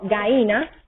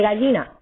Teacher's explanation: el debilitamiento de la Y intervocálica. Por ejemplo, gaína en vez de gallina, gaína.